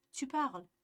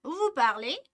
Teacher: ya'ni bu ohang, intonatsiyani ko'tarish orqali, ya'ni ega va kesim o'z o'rnida qolib, faqat ohangni ko'tarib so'roq formani yasaymiz